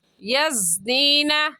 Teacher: زا بھی سختی سے پڑھے جانے والے حروف میں سے ہے جن کو پڑھتے وقت سیٹی کی آواز ہے